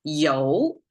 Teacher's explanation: challenging part you have to pronounce it as a Yo and the rising tone to make it sound oil in Chinese